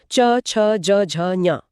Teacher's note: च वर्ग, उच्चारण स्थान तालु। च छ ज झ ञ। जीभ ऊपर तालु को छूती है।